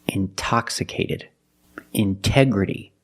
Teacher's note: the stress is after the NT in these words so we pronounce a t as a pure T